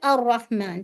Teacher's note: جیسے بہت سے لوگ پڑھتے ہیں رحمان ایسے کر کے آواز نہیں، رحمان ایک دفعہ بس را کو ہٹ کرنا ہے